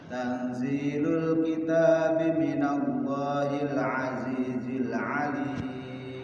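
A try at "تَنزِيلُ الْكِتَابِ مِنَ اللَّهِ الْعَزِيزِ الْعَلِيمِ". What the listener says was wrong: Sekali lagi ikhfanya kurang Pak Haji.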